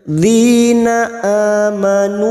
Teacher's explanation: ada hamzah yang berharokat alif kecil di atas, namanya mad badal, cabang dari mad tabi'i, 2 harokat kita panjangkan. Nu, ada mad lagi di sini yang bertemu dengan hamzah di lain kalimat, namanya bacaan mad jaiz munfasil, 5 harokat kita panjangkan.